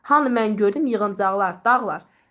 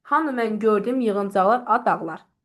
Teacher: birinci dağ hecasında siz daha qüvvətli şəkildə tələffüz etmiş olursuz. Vuruğu düşür ora.